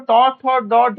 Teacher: নাম হচ্ছে তালব্য বর্ণ ক্লিয়ার এরপরে ট ঠ ড ঢ মূর্ধন্য জীবটা ট উচ্চারণ করতে গেলে আমাদের মুখের উপরের যে অংশটাকে স্পর্শ করছে সেটাকে বলা হচ্ছে মূর্ধা মূর্ধাকে স্পর্শ করবে বলে এটার নাম হচ্ছে মূর্ধন্য বর্ণ তারপরে ত